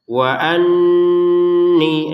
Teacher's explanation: nun bertasydid didengungkan 2 harokat